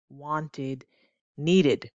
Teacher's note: you notice the sound that that ed makes wanted id so the first sound that the ed makes in english is the id sound